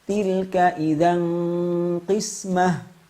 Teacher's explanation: Karena huruf qafnya berharokat kasroh, maka tafkhim nisbi.